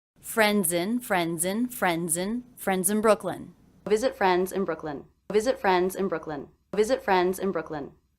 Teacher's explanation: the ending Z sound of friends linked into the beginning vowel of the next word.